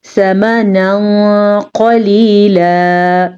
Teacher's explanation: تنوین کے بعد قاف حروف اخفا میں سے آیا ہے تو ہم نے نون تنوین کو چھپایا ہے